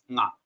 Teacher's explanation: the 6th letter nga uses nose plus kantha. So this nga is actually 1 plus 6, 1, 1,6.